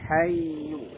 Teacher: Tekan tapi dialirkan karena dia punya sifat rokhawah.